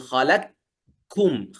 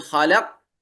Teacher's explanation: الإدغام الكامل مثل أبي عمرو، كأنه ينطقها كاف مشددة، يقول خلقكم، تنظرون كاف ما في صوت للقاف. لكن الإدغام الناقص تقول خلق، كأنك تريد أن تنطق قافا لكنك تخرجها كاف، فأنت تبدأ بالقاف وتخرج كاف.